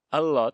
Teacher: en las Islas Baleares todavía se conserva la pronunciación geminada